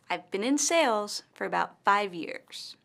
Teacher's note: In this sentence the word sales and five years are stressed